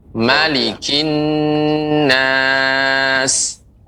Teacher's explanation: dalam surah An-Nas, mimnya tidak panjang